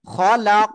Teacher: খলাক, আর কফ خلق হলো কলকলার অক্ষর, সাকিন রয়েছে তাই আমরা ধাক্কা দিয়ে পড়বো